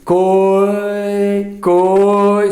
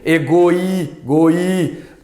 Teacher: Percebam esse O e esse I, e esse O e esse I. Coi, coi, sobe no O, cai no I. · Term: semivogal